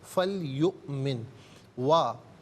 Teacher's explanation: हमज़ा साकिन है, इसे झटके के साथ अदा किया जाएगा।